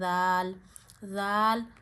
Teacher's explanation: आपकी जबान की नोक के ऊपर वाला हिस्सा जबान का सिरा ऊपर के दांतों के अंदरूनी किनारों पे लगा के दाल नरमी से पढ़ना है।